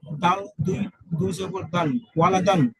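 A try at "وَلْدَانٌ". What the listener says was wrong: দালের সাথে একটা আলিফ আছে তো, ওইটাও বলেন। দাল আলিফ দুই জবর দান।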